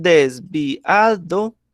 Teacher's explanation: no es un diptongo, porque mire que estoy separando la I y la A, que es la que me formaría el diptongo.